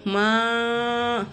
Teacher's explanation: அப்போது மத்து எந்த எழுத்தில் வச்சுருக்காங்களோ அந்த எழுத்து நம்ம என்ன செய்யணும், மா அப்படின்னு சொல்லாமல் அதை நம்ம நீட்டணும் 3 அலிஃபுக்கு. ஏன்னா இது சின்ன மத்தா அப்படின்னால 3 அலிஃபு நம்ம என்ன செய்யணும், நீட்டணும்.